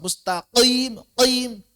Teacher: berlebihan dalam menebalkannya khususnya saat kasrah.